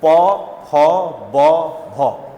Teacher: जब होंठ आपस में टकराते हैं तो उसे हम क्या कहते हैं? ओष्ठ्य।